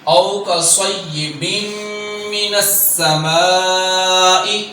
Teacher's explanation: با کے نیچے دو زیر ہیں اور آگے میم ہے، تو یہاں ادغام ہو رہا ہے، ادغام یرملون غنہ کے ساتھ · سین میں سیٹی پیدا کرنی ہے اور ساتھ ہی باریک بھی پڑھنا ہے